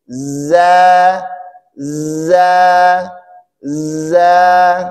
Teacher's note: Salah satu sifat dari huruf Za yaitu rakhwah ya mengalirnya suara kita bukan hams